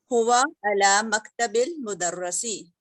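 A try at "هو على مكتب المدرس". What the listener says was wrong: अभी मुदर्रा तो नहीं होता, मुदर्री मुदर्री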